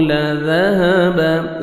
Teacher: زال کو نرمی سے ادا کریں گے، ہاں کو اپنے سے مخرج سے ادا کریں گے تاکہ ہاں میں ساؤنڈ مکس نہ ہو